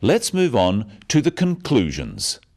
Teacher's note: stressing conclusions because it's the key word in the sentence